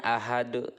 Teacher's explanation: Cara membacanya itu harus memantulkan huruf qalqalahnya dengan benar-benar jelas, besar dan tebal. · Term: qalqalah kubro